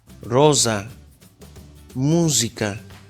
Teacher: pronunciación sonora de la s apoyamos la lengua en el paladar casi tocando los dientes de arriba casi no tocando los y pronunciamos las palabras en italiano rosa